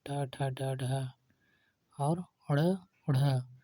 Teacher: इस प्रकार के वर्ण को बोलने में जिह्वा मूर्धा को छूती है, जैसे ट वर्ग ट ठ ड ढ और ड़ ढ़। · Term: मूर्धन्य